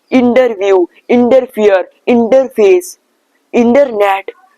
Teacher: whenever you are gonna see a T after an, means N and then T, then just make the T silent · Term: silent T